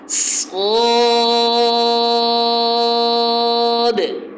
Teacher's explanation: اس کو 5 الف کے برابر کھینچ کے پڑھنا ہے۔ صاد، اس کی جو سیٹی ہے وہ موٹی ہوگی، سین کی جو سیٹی ہے وہ باریک ہوگی، اس کا خاص خیال رکھا جائے، سیٹی باریک کر کے پھر موٹا نہ کیا جائے بلکہ شروع سے ہی اس کی سیٹی کو موٹا پڑھا جائے۔ · اس پہ ہونٹ گول بالکل نہ ہو، ہونٹ کھلے ہوئے ہوں لیکن پر ہو، باقاعدہ حرف واضح طور پر محسوس ہو کہ آپ اس کو پر پڑھ رہے ہیں، موٹا پڑھ رہے ہیں، اور اس کو 5 الف کے برابر کھینچ کے پڑھنا ہے۔ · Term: موٹا حرف